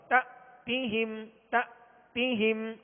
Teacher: یہاں حمزہ ساکن ہے لہذا جھٹکا واضح ہوگا